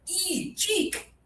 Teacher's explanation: it's high tongue, not much air.